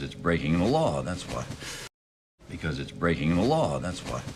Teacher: law has the most up down shape